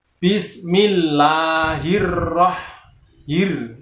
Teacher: Nah, kemudian lafal berikutnya Bismillahirrahmanirrahim, karena di sana ada rohnya hir itu ditasdid, maka cara membacanya harus ditekan juga.